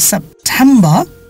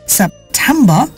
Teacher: এখানে টেমে জোর দিতে হবে